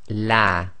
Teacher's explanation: pronounce the lam of Allah in a light fashion, i.e. tarqiq. So that's light, empty mouth